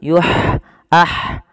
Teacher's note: ha ada sifat hamesnya mengalirnya nafas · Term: ha kecil